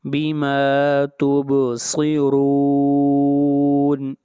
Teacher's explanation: را کو بھی یہاں پر موٹا پڑھا جائے گا، را کے اوپر پیش ہے۔ بما تبصرون، اور جہاں پر مد ہے اس مد کو مد عارض وقفی کہتے ہیں، جہاں پر حروف مدہ کے بعد عارضی سکون ہو۔